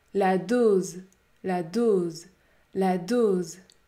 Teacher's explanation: La voyelle O est suivie par le son Z, Z, Z. Il faut donc prononcer un O fermé.